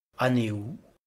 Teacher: certains grammairiens prononcent aneu, ils prononcent eux comme en français la diphtongue composée des deux voyelles epsilon et upsilon. D'autres linguistes proposent eu, donc aneu ou aneu.